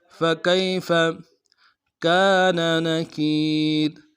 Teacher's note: کاف کو یا کے ساتھ ملانا ہے، یا لین بغیر کھینچے پڑیں گے، فا کو نرم سے ادا کریں گے.